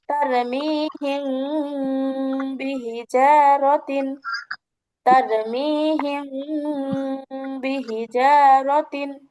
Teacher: আমি কিন্তু গুণনা করতেছি মিম সাকিনে, কিন্তু আমার আওয়াজটা শোনা যাচ্ছে অনেকটা অনেশ্বরের মতো, ঠিক আছে? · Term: মিম সাকিনের ইকফা